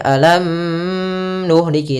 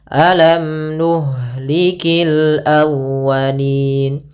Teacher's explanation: Nah, setelah ini kita lihat ada nun, berarti dia izhar syafawi. Izhar berarti mimnya jelas, tidak boleh ditahan. Tidak boleh alam nuhliki, tinggal, tapi langsung saja alam nuhlikil awwalin.